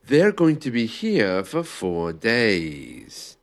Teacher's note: you can hear there that I took a natural breath when my intonation dropped.